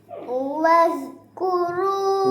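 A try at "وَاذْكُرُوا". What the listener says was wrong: waz bawa keluar lidah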